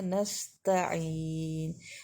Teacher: سین کو پڑھتے ہوئے ہونٹ پھیلیں گے کیونکہ اسے باریک رکھا جائے گا